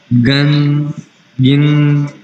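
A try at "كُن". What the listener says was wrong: گاف نہیں ہوتا کاف ہے. کاف ہے گاف نہیں ہے. عربی میں گاف نہیں ہوتا بھائی.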